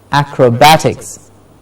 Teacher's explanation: Okay, in the words ending with ix, as in I-C-S, ix, the syllable before ix is stressed. For example, acrobatics, bat gets the stress.